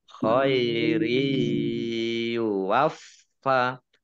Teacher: Khairi masuk dengan mendengung ya, ditandai ya-nya ada tasdidnya. Khairi waffa, fa-nya dibaca double, ada tasdidnya. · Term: idgham bi gunnah